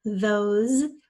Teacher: although it sounds like a Z that's one of the sounds that the S makes